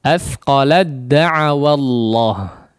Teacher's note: huruf ta yang kondisinya bertanda sukun ya, langsung masuk kepada huruf dal ya. Sama di sini tidak perlu juga untuk mengeluarkan sifat-sifat dari huruf ta ya. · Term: idgham mutajanisain